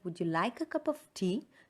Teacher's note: So would you is not stressed.